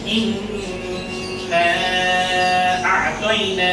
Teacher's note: নুনের উপর তাসদীদ আছে, তাই এখানে পরের অক্ষর হামজা আসা সত্ত্বেও, ইজহারের অক্ষর থাকা সত্ত্বেও এখানে গুণনা করতে হচ্ছে, করা বাধ্যতামূলক, এই কারণেই যেহেতু এর উপরে তাসদীদ আছে। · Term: ওয়াজিব গুণনা